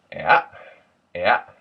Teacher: what you do is you give it a little bit of a dip and a push. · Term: Ayuh